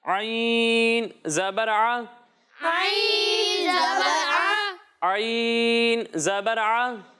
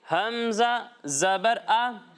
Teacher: اور جب ہم حمزہ کی ادائیگی کریں گے تو اسے حلق کے نچلے حصے سے پڑھیں گے